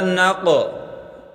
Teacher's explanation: قاف پر قلقلہ کریں، قاف کو موٹا کر کے پڑھیں۔